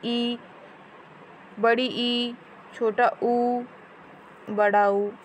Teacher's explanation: तो फ्रेंड, विवृत स्वर यानी कि जिसमें मुंह जो है हमारा वो ज़्यादा खुलता है, जैसे कि विवृत में आ, अर्ध विवृत में थोड़ा कम खुलता है, आ, ए, ओ। संवृत में जो है कि बहुत ही कम खुलता है, मतलब होठ से ही हम अब उन वर्णों को उच्चारण कर लेते हैं, जैसे ई, बड़ी ई, छोटा ऊ, बड़ा ऊ।